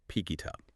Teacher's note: The K sound shifts to become the onset of the I, and the T shifts to the U. The articulatory boundary actually moves. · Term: linking the consonant